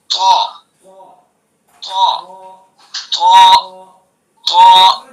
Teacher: ٹھیک ہے، بس طا کو پر کرنا ہے، یعنی منہ بھر کے پڑھنا ہے. مخرج وہی ہے، یعنی زبان کی نوک ثنا علیہ کی جڑ. بس اس حرف کو پر کرنے کے لیے زبان کا پچھلا حصہ تالو پر چمٹانا ہے